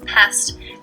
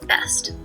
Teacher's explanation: The delayed onset for the p sound, for example, is what allows us to perceive pest as a different word from best.